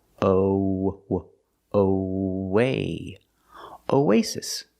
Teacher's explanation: pronounced like a long a like say and pay together o when you link these two vowels you have a ww sound in the middle like a w ww in the middle o w o way